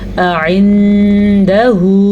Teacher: हमज़ा और आइन इन दोनों को अलग अलग वाज़ह करके पढ़ना है, ठीक है, लेकिन दोनों के दरमियान में गैप नहीं होना चाहिए।